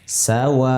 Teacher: wa-nya lebih panjang, ada tanda alis di atas. Ya. Sama dengan sin, fathah, sa.